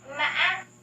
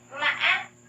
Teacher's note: there is a pause when you pronounce the third tone